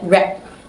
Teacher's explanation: my subject tended to weaken the final d, making it sound closer to t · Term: devoicing or weakening of final d